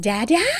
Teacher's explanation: a questioning intonation where your kid is like saying dad